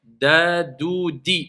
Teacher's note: on a le bout de la langue avec la base des incisives supérieures d'où sortent le Del et le Ta.